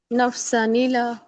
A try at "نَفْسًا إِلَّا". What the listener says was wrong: तशदीद drop करें, तशदीद नहीं drop करनी लाम की।